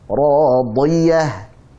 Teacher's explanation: Huruf dad tebal. Dia memiliki sifat isti'la dan juga idbaq, maka tebal.